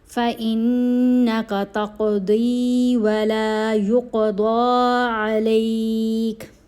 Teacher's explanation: قوف حروف قلقلہ میں شامل ہے، اس لیے ہم نے قوف کی آواز کو ہلا کر پڑھنا ہے، تقدی یعنی قلقلہ کرنا ہے، اور داد کو پر پڑھا جائے گا، یہاں پر بھی یہاں پر بھی۔